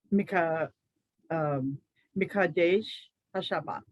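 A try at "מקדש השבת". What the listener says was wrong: Perfect. There you are.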